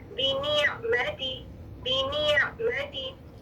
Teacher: تھوڑی آواز چل رہی ہے، جھٹکا نہیں ہے، یہ حمزہ ساکن نہیں ہے، یہ آئین ساکن ہے